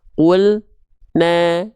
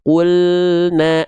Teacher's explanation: jangan sampai kita baca qul na, tapi qulna l-nya terus jalan ya. Oke, itu yang teman-teman harus perhatikan ketika melafalkan lam sukun ya.